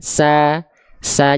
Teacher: kalau keluarnya vokal a tipis dia dilafalkan sambil seolah tersenyum contohnya misalnya kita lafalkan huruf Sin sa nah gini melafalkannya sa